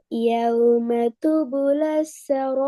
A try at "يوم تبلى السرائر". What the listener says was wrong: கொஞ்சம் ராவ வெளிப்படுத்தி இந்த மெல்ல மெல்ல போதும். ஈர் ஈர் يوم تبلى السرائر.